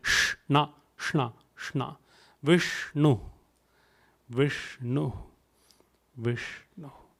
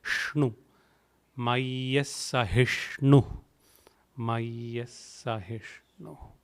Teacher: Again the S and the H, so S and the N in the end part of the term both have dot below. So rolling your tongue up, retroflex